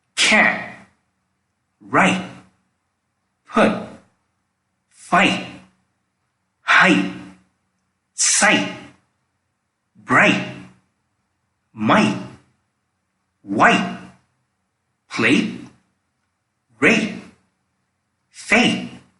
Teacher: In this case, the T sound is almost silent, but not exactly silent. For this, the tip of your tongue needs to touch on the front wall of your upper gums. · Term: held T